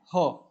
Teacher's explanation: ह का उच्चारण जो है वह कंठ से भी माना गया है